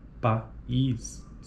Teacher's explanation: em sequências de vogais, como na palavra país, cada uma das vogais tem proeminência acentual, constituindo o pico de sílaba.